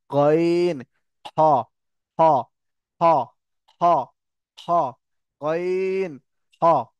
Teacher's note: এই দুটো উচ্চারণ হবে একদম হালাকের শেষ, গইন, খ, জিভের গোড়া